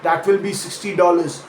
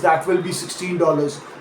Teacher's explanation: punching that second syllable hard and holding the final N clearly on the teen numbers